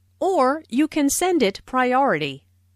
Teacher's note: notice the stress on or, which emphasizes that there is another possibility.